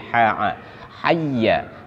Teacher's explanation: dia termasuk di tengah sama makhraj sejajar dengan Ain